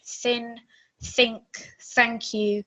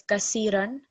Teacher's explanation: that very soft th sound it needs to be different to seen